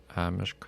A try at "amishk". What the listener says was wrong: Amishk. Il y a un I, là. Non.